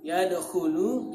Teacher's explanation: kha itu berada pada pangkal tenggorokan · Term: makharijul huruf